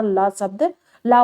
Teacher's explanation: जीभ हमारी जाके ऊपर सट जा रही है तो साइड साइड से हवा के द्वारा ल शब्द, ला वर्ड निकल रहा है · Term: पार्श्विक व्यंजन